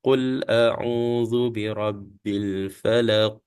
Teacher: jadi bunyi lepasan qf itu dibunyikan di hujung Falaq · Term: Qalqalah